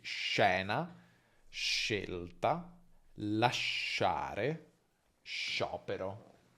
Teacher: sh, che è un suono che si articola tra alveoli e palato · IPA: /ʃ/